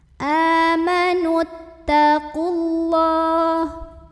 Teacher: Maka terlepaslah huruf sukun yang pertama. Qafnya pendek kalau wasal, namanya takhallus bil hadfi.